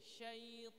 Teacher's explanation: ketebalan huruf itu bukan karena bibir tapi karena pangkal lidah yang naik sehingga suara menjadi sempit jadi bibirnya diam sit Jadi bukan sit sekali lagi anak contohkanubillah